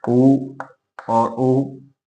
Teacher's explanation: ऊ और ऊ, इनके उच्चारण स्थल ओष्ठ है।